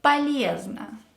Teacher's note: Ye is stressed, so the first O and the second O will be pronounced as A.